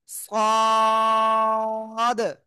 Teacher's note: জিহ্বার আগার সামনে নিচে দুই দাঁতের পেটও আগার সাথে লাগবে, লাগিয়ে একটু মোটা আওয়াজে পড়বো।